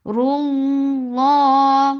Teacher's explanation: lafz jalala will be heavy because there is dhamma before it. Whenever there is dhamma or fatha, it is always heavy.